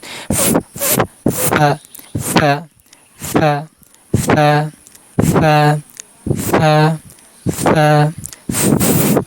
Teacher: দাঁতের আগাটা নিচের ঠোটের মধ্যখানে লাগাবেন একটা বাতাস বের করবেন ফা ফা ফা ফা ফা আগে একটা বাতাস বের করে নিবেন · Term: ফা হরফ